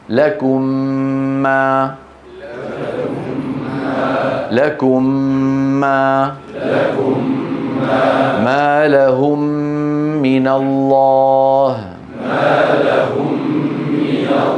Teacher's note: تدغم الميم الساكنه اذا اتى بعدها حرف واحد وهو الميم مع تطويل الغنه اكمل ما تكون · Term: الادغام